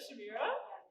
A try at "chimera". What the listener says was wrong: It's actually pronounced chimera with a hard K. Chimera.